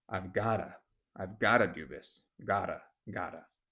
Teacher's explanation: turning the T into the duh or the D sound